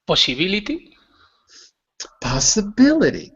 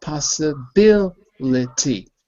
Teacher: 2 syllables at the end are unstressed